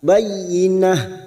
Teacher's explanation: pada ujung ayat terdapat tak marbutoh. Pada saat dibaca wakaf maka ini kita baca ha.